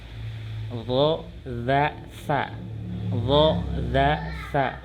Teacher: Nah, di sini ujung lidah dengan ujung dua buah gigi atas. Jadi ujung lidah nih udah nempel gitu ya ke gigi seri atasnya.